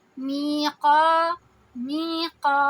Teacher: آواز کو لمبی کریں گے، اور قا میں بھی، میقا، میقا، 2 حرکہ آواز لمبی کی، قاف کو ہیوی کیا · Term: مد طبعی